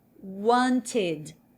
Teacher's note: Ao colocar o ED, esse ED agora vai ter som de id, id. Ou seja, o E tem som de I e o D tem som de D mesmo